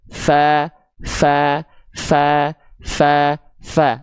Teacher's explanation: dia akan mengalirkan hembusan angin karena huruf fa punya sifat hams